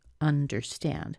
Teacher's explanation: So if we were to look at the word understand, we would see that it's a 3-syllable word, and the pattern would be a medium stress, so that's what that shows, a weak stress, and then a strong stress.